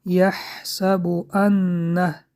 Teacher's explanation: حرف نون با تشدید حرف نون را 2 تا می خوانیم